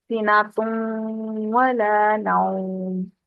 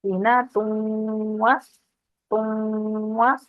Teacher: جیسے سینا تم ولا نوم، سینا تم تم، اتنا یہاں پر روکیں گے آواز کو، نو یعنی تن وا نہیں کریں گے. تا کو، تا کی تنوین جو ہے وہ واؤ کے ساتھ اس کو ملائیں گے تو واؤ پہ تشدید آ جائے گی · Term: غنہ